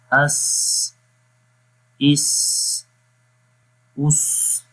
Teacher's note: صفت صفیر میں سیٹی کی آواز جو ہے وہ آتی ہے۔